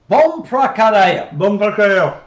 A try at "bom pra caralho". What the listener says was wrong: Bom pra caralho. Bom pra. Okay, you're rolling your tongue. Ka. Ra. Io.